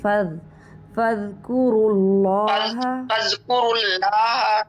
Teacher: فض کلکلا نہیں ہوگا ذال پر